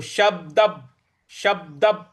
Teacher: योगस्य, जिज्ञासुरपि योगस्य, इस प्रकार से बोलेंगे। शब्द, शब्द जो ब है उस पर हमको आघात देना है, तो शब्द, शब्द ऐसे होगा।